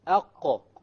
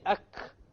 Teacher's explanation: So if you make a mistake and you say ak, which is a kaf, you know that your tongue is hitting the hard palate, which is a mistake. It's supposed to hit the soft palate.